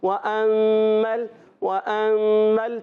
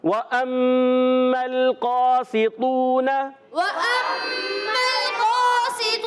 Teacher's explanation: حمزہ کو خوب تحقیق سے پڑھیں گے، ظاہر کر کے پڑھیں گے، اس کو نرم نہیں کرنا · تسہیل ہو جاتی ہے۔ تسہیل نہیں کرنا ہے، یہاں پر ہم نے تحقیق کرنا ہے، یعنی خوب ظاہر کرنا ہے